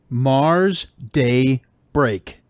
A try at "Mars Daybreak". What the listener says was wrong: I was going to say the way you said that, kind of made it sound like 3 words, and that's incorrect.